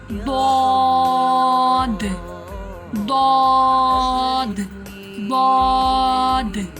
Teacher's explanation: زبان کی کروٹ اور اوپر کی داڑھوں کی جڑ سے ادا ہوتا ہے۔ زبان کی کروٹ یعنی کہ جب زبان ہلتی، کروٹ ضاد، آپ ضاد کو ادا کریں گے، دیکھیں آپ کی زبان کروٹ لے گی، اور اوپر کی جو داڑھیں ہیں ان کی جڑ سے، یعنی کہ داڑھیں جہاں سے شروع ہوتی ہیں نا، وہاں سے ضاد ادا ہوتا ہے۔